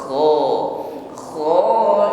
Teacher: Ada gesekan di tenggorokan ketika mengucapkan